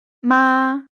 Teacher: For example, the same segmental string ma corresponds to four distinct lexical items depending on its tones. These tones are a high level, the word for mother